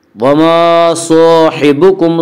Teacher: صاد کو پر پڑھیں گے، صاد حروف مستعلیہ میں سے ہے۔ حروف مستعلیہ 7 ہیں جن کا مجموعہ خصہ ضغط انقضا ہے، جو ہمیشہ ہر حال میں پر پڑھی جاتی ہیں۔